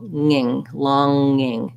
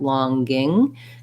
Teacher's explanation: So just you have to be able to release the NG into the vowel without letting the tongue come down and making a G sound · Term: NG sound